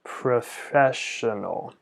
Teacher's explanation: So, I always try to slow down the way I say it. I try to prolong the F and the sh a little bit.